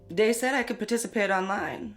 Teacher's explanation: using something like a d sound for where you see a written th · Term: Th stopping